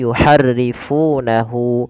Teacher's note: lafal fu di sini kita panjangkan dua harakat karena Iya Mad thbii'i dan alirkan lafal Fa itu dengan nafasnya